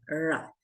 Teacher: Acá la lengua debe estar perpendicular al paladar cerebral.